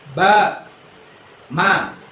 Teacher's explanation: Kalau yang ba dan mim ini rapat bibirnya, langsung ditekan dengan udara.